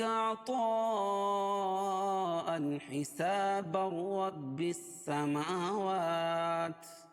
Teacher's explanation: اگر حسابن کو رب السماوات کے ساتھ ملا کے پڑھیں گے تو یہاں ادغام بلا غنہ ہو جائے گا، کیوں کہ تنوین کے بعد ادغام بلا غنہ کے 2 حرفوں میں سے یہاں را آ جائے گی.